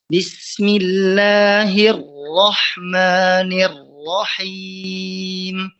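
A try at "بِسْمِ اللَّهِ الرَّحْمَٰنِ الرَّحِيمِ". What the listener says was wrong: Ya.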